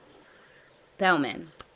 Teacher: it starts with an S, then it goes into a stop plosive